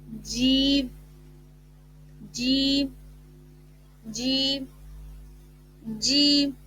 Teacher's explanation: جیم کا مخرج ہے زبان کے درمیان اور تالو کے درمیان سے